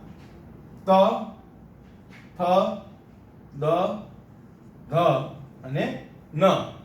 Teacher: તો આમાં તમે જ્યારે બોલશો તો જ્યારે આપણે એક જીભ છે એક લયબદ્ધ દાંતને સ્પર્શ કરશે. ત બોલો તો ઉપરના દાંતને સ્પર્શ કરે છે, થ તો નીચેના દાંતને સ્પર્શ કરે છે, દ વળી ઉપરના દાંતને સ્પર્શ કરે છે, ધ નીચેના દાંતને સ્પર્શ કરે છે, ન વળી પાછા ઉપરના દાંતને સ્પર્શ કરે છે. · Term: દંત્ય